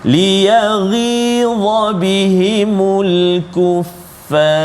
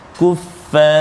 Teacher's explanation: Ra saja tebal, jangan ajak fa tu. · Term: tafkhim tebal